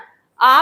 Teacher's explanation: आ में कोई गोल नहीं होता होठ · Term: अवृत्ताकार